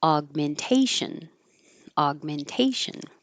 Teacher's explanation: This little mark is here by the G to let you know that you hold your tongue in the G position, but you don't release aug. Just hold it, aug.